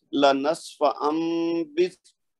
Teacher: با کی آواز تو اپنی جگہ رہے گی. جو نون ہے نا اس کی آواز میم میں بدل جائے گی. یعنی اس کو ہم پڑھیں گے لنصف بس یعنی میم کی آواز آئے گی اور اس کے بعد با کی آئے گی.